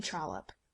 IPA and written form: ˈtrɒləp (Trollope)